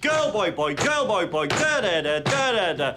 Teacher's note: One stressed syllable followed by two unstressed syllables. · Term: dactylic dimeter